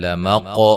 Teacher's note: قاف کو موٹا ادا کریں گے، قلقلہ ہے